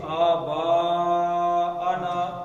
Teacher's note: یہ مد اصلی بن گیا اور اس کے آگے آ گیا حمزہ، تو مد زیادہ ہو گئی. تو اب یہ بڑی مد پڑ گئی.